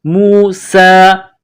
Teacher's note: سین میں سیٹی کی آواز پیدا کریں گے، سین کو باریک پڑھنا ہے ، سین کے اوپر کڑا زبر ہے، موسیٰ، وَإِذْ قَالَ مُوسَى